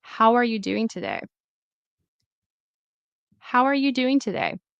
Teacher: the W, the consonant sound, will go into where the vowel starts